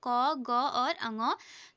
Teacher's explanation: प्राण मतलब वायु। इन वर्णों के उच्चारण में प्राण वायु कम मात्रा में बाहर निकलती है और उच्चारण भी कम समय में होता है। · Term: अल्पप्राण